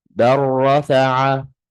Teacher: So over here the lam has the sukoon and the ra has the shadda. So I'm not going to read the lam at all. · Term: idgham